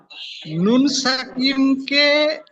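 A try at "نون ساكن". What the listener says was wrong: সাকিম না, সাকিন, সাকিন।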